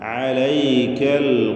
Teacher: തൊണ്ടയുടെ മധ്യമാണ് ഐനിന്റെ മഹ്റജ്